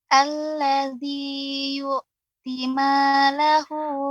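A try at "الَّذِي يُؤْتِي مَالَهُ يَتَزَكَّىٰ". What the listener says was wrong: Yu'ti. Kurang matnya Ibu, perhatikan lebih fokus lagi. Setelah ta ya ada ya sukun. Yu'ti ma, cukup ditekan saja. Yu'ti malahu. Maka itu sudah 2 harokat.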